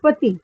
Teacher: And the masculine form, which is PETIT, is pronounced as pati. The last T is muted.